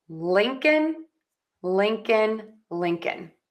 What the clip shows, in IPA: ˈlɪŋkən